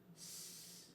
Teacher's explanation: s, which is a consonant that is unvoiced continuous. The sound s is made with the tongue behind the teeth.